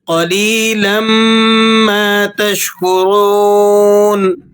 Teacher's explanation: را کو آپ نے موٹا کر کے پر کر کے ادا کرنا ہے اور قاف کو بھی آپ موٹا کر کے ادا کریں گے